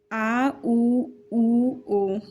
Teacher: जीवा के पश्च भाग से उच्चारित होते हैं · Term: पश्च स्वर